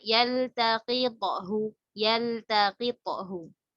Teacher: Qaf pangkal lidah, to di ujung lidah. Tapi dari segi sifatnya itu sama-sama qalqalah. Kemudian dia sama-sama jahar, sama-sama syiddah ya.